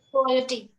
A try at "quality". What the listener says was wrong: Yes, perfect.